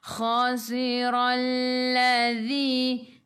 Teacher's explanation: Zi itu hujung lidah keluar pada gigi depan, zi 2 harakat, ada ya mad asli.